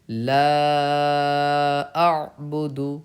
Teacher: کیونکہ حروف مدہ کے بعد لام الف حروف مدہ ہے، اس کے بعد حمزہ دوسرے کلمے میں آ رہا ہے، حمزہ عین زبر آ، تو مد منفصل ہوگا. مد منفصل کو بھی 2 سے 4 الف کے برابر کھینچ کے پڑھنا چاہیے